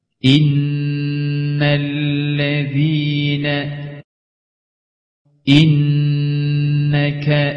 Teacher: Mim ve nun harfleri şeddeli olurlarsa gunneli okunur üzerlerinde bir elif miktarı durulur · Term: şeddeli nun ve mim